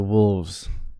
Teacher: the s becomes voiced in wolves and you might hear a little bit of lengthening as a